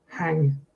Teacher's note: an M at the end of the words is often pronounced without closing the lips